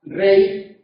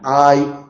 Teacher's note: Este otro elemento, que en este caso, como en ley, como en hay, se representa mediante la Y o Y, es lo que yo llamo semivocal, porque es un elemento postnuclear